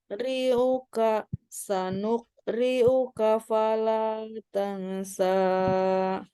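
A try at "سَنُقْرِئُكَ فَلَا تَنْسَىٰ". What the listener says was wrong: Jadi, kol-kolahnya harus terdengar.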